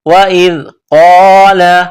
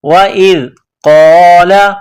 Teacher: حمزہ کو زال کے ساتھ ملانا ہے, زال کو باریک کرنا ہے. وَإِذْ قَالَ, قاف کو موٹا کرنا ہے.